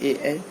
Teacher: ए कंठ से भी और तालु से होते हुए उच्चारित होते हैं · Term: कंठ तालव्य